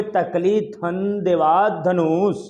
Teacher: हमारी जिह्वा हमारे दांत को स्पर्श करते हुए इन वर्णों को, इन ध्वनियों को बाहर फेंक रही है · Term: दंत ध्वनिया